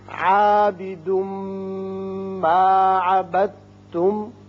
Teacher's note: تنوین کے بعد میم آ رہا ہے، اس لیے یہاں ادغام بغنہ ہوگا